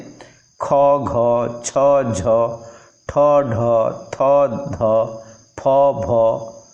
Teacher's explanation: सेहीपरि महाप्राण ध्वनि होछि प्रत्येक वर्गर द्वितीय और चतुर्थ ध्वनि यथा समय रे माने यथाक्रमे ख घ छ झ ठ ढ थ ध फ भ ର ଉଚ୍ଚାରଣ ସମୟରେ ଫୁସ୍ଫୁସ୍ ରୁ ଅଧିକ ବାୟୁ ବାହାରକୁ ନିର୍ଗତ ହେଉଥିବାରୁ ଏଗୁଡ଼ିକୁ ମହାପ୍ରାଣ ଧ୍ୱନି ବା ଆସ୍ପିରେଟ୍ସ କୁହାଯାଏ।